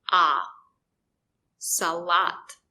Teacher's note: The second syllable is stressed, so the letter A makes an open sound.